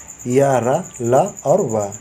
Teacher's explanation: जिन व्यंजनों का उच्चारण करते समय जीभ मुख के भीतर किसी भाग का पूरी तरह से स्पर्श नहीं करती, उन्हें अंतस्थ व्यंजन कहते हैं। इनके उच्चारण में सांस का अवरोध बहुत कम लगता है।